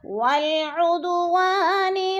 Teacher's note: وَالْعُدُوَانِ، ادو پہ قلقلہ ہو رہا ہے، دال ساکن ہے اور حروف قلقلہ میں سے ہے، وا کے اوپر الف مدہ ہے، الف مدہ کو ہم نے ایک الف دو حرکات کے برابر لمبا کر کے پڑھنا ہے